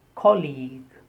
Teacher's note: The stress on the first syllable and the second sound is long E.